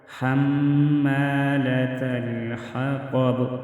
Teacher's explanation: حما میم مشدد میں غنہ ہوگا۔ حمالۃ الحطب، طا کو موٹا پڑھیں گے، مستعلیہ حروف میں سے ہے اور وقف کی صورت میں با ساکن ہوگا تو ادھر ہم قلقلہ کریں گے۔